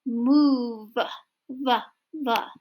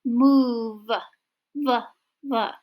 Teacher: You should be able to feel in your vocal cords there is a vibration.